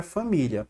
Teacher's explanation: A sílaba tônica é a penúltima.